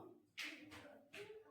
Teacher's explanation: ہا حلق کے آخری حصے سے یعنی سینے کی طرف جو حلق ہمارا ختم ہوتا ہے وہاں سے نکلتا ہے